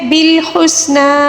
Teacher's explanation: ہا کو حلق کے درمیانی حصے سے ادا کریں گے اور سین کی سیٹی اور کھڑا زبر میں وقف کے دوران کوئی تبدیلی نہیں آئے گی، ٹھیک ہے۔